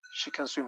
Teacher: can goes for a schwa or a weak form